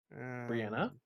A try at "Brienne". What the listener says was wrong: Oh, it's it's the desert of Brienne. There's no A at the end of it. well, it's not pronounced it in their tongue. You guys keep assuming that the English pronunciation is the way they say it, when English doesn't even exist in this universe. So, Brienne.